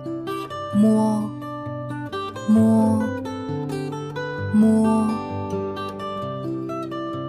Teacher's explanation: Hai môi khép, ngạc mềm và lưỡi tệ hạ xuống tự nhiên. Khi phát âm, âm thanh từ mũi ra, dây thanh rung. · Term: âm môi mũi